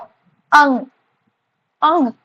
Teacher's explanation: mouth से उच्चारित होने वाले शब्द उसके बाद है नासिक्य वर्ण मतलब जो आवाज निकलेगी वह हमारे नाक से होकर निकलेगी मतलब नोज से आवाज निकलेगी ठीक है सो अंग अंग देखिए थोड़ा सा नाक से आवाज